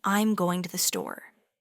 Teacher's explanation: For a statement, think of saying, "I'm going to the store." Your voice drops on store, signaling the end of the thought. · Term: falling intonation